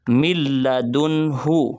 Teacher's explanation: اسی طرح لام کی مثال دیکھیں تو یہ من لدنہ نہیں ہے، من لدنہ، من لدنہ، نون حروف یرملون کے لام آنے کی وجہ سے نون ساکن جو ہے وہ ختم ہو جائے گا